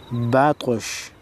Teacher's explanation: طا حروف قلقلہ میں سے ہے، لہٰذا طا کو ہلا کر پڑھیں گے۔ با طا زبر بطا، شین زبر شا، بطا شا وقف بطش۔